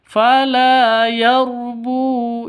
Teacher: Bu panjang 2 ketukan karena ada wawu mati diawali dengan dhammah. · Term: mad asli